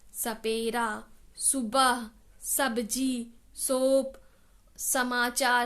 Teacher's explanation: व्यंजन सा में हम बिल्कुल भी अपनी जीभ को ऊपर टच नहीं कराते, उसको फोल्ड नहीं करते